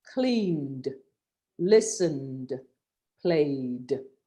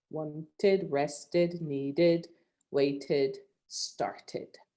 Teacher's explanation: only where there is a t or a d do you pronounce the e d as an additional syllable